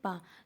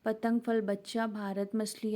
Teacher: और दोनों ओट बोल कर आप देखिए, पा, दोनों ओट बंद हो जाएंगे। आप पा बोलिए तो क्या होगा, दोनों ओट बंद हो जाएंगे, इसलिए हमें ओष्ठ व्यंजन बोलते हैं।